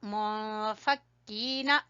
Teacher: اخفا کرتے ہوئے کاف کو باریک پڑھیں گے اور کھینچیں گے کاف کو یا مدہ کی وجہ سے ، اور نون کو چھوٹا پڑھیں گے، حتی، ہا کو گلے